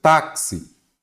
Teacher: Uma paroxítona, porque a sílaba tônica é a penúltima. Então, paroxítona.